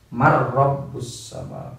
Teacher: nun mati ketemu ro langsung mar rabbus sama, tanpa didengungkan, tanpa ditahan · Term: idgham bila gunnah